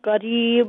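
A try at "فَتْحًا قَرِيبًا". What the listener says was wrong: اچھا، یہ فتحا نہیں ہے، اخفا ہے یہاں پہ.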